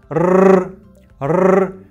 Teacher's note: Тілдің ұшы жоғарыда дірілдеп тұр, әрі таңдайыңызға тимейді. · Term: р әріпін